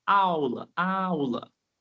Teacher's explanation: A sílaba forte é o a. A aula. Esse u quase não aparece. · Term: semivogal